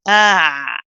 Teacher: it's not a breathy letter it's a letter of jahar which means that you're not going to rely on the breath this time instead you hear the sound of your voice